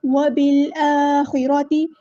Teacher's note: وبالآخرۃ، با کو ہم لام کے ساتھ ملا دیں گے، اور الف پہ کھڑا زبر ہے تو مد اصلی کریں گے، نیچرل مد ہو رہی ہے، 2 کاؤنٹس کے برابر لمبا کرنا ہے ، خا کو ہم نے پور ادا کرنا ہے، ہیوی لیٹر